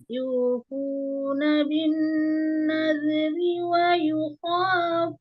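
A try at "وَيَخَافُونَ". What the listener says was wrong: Waya Sasni, bukan wayukha, wayakha.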